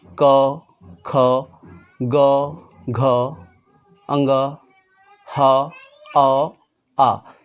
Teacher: कंठ के बाने, जिसको कि हम लोग हलक भी कह सकते हैं, यानी गले से आवाज़ निकलेगी। इसमें आपके ज़बान का, जीभ का कोई रोल नहीं होगा, ये आवाज़ सीधे गले से निकलेगी।